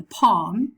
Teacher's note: the back of the tongue remains flat. It doesn't go up, and with considerable separation of the jaws.